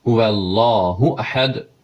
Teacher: Yəni daha doğrusu H sadədir. 11-ci məsələ, U qısadır, Ü də deyil